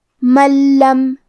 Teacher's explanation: کلمت من کے آخری میں نون ساکن ہے پھر حرف اللام ہے. لام حروف الادغام بغیر غنہ میں سے ہے تو ہمیں یہ حکم کو بغیر غنہ سے لیکن تشدید کے ساتھ ادا کرنا ہے